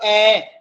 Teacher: होठ क्या हो गए? पीछे की तरफ चले गए ना, यानी गोल हुए नहीं गए ना